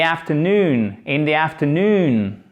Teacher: avec un A court et on termine par un OU, afternoon, pour prononcer les deux voyelles, les deux O qui se suivent.